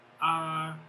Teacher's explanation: The first tone, which is flat